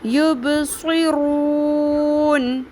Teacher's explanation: رو کو بھی پر کریں گے، صاد کو بھی پر